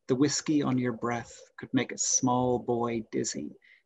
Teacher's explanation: You hear that pop, pop, pop of those three stresses in a row because the boy doesn't really want to be in an unstressed